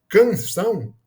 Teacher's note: apesar de ter duas letras, a gente tem um fonema só, que é o an, né? Que é o A com o tio em cima